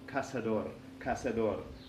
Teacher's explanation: casa door you see is always an S sound in America